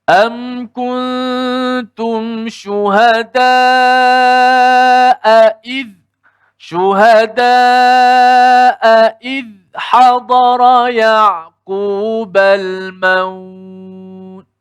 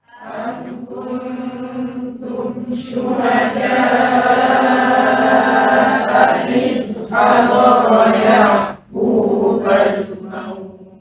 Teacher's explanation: أم كنتم شهداء إذ حضر يعقوب الموت Okey, dan kaedah orang Arabnya bila dua hamzah bertemu ini, kita kena kuatkan sedikit intonasi kita pada salah satu hamzah itu. Dan yang baiknya hamzah kedua tu ditekankan sedikit.